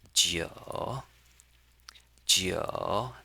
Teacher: Number nine, we pronounce it as jiu, jiu. That is the third tone.